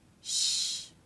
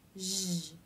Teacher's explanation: These two sounds are paired together because they take the same mouth position. Sh is unvoiced, meaning only air passes through the mouth, and zh is voiced, meaning you make sound with your vocal cords. To make this sound, the teeth come together, the corners of the lips come in, and the rest of the lips flare. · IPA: /ʃ/, /ʒ/